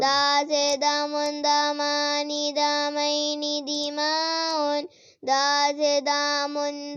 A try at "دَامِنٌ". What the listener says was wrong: لمبا نہیں نہ کرنا